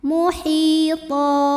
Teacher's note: Karena ada baris tanwin fathah yang kita berhentikan atau kita wakafkan. Cara bacanya baris 2-nya jadi 1, jadi fathah dan panjangkan 2 harokat. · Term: mad iwad